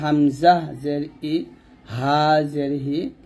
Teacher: হামজা এবং হা এই দুইটি হরফ গলার শুরু থেকে · তারপরে হলো যে সব শেষে 6টি হরফ, এই 6টি হরফ গলা থেকে বের হবে। হামজা এবং হা, এই 2টি হরফ গলা শুরু থেকে